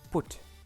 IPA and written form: pʊt (Put)